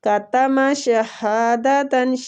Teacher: کتم شہادتاً، ہا کو کھینچیں گے. یہ ہا جو ہے یہ عقص الحلق سے نکلتا ہے